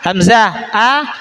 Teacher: tenggorokan bagian bawah ya itu makhrajnya letak makhraj huruf hamzah